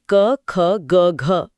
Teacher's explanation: सबसे पहले हवा गले से यानी कंठ से टकराती है। जहां से क वर्ग जैसे क, ख, ग, घ पैदा होता है। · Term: कंठ्य